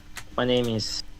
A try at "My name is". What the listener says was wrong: You kind of did ease instead of is my name is